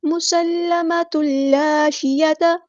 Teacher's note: سین کی سیٹی ہم واضح کریں گے ، اور یہاں پہ لام مشدد ہے اس کو جماؤ کے